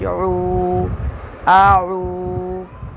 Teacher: عین کی آواز حلق سے نکالیں گے